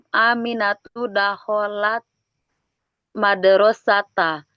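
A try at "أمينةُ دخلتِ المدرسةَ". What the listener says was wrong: Nah, sudah betul.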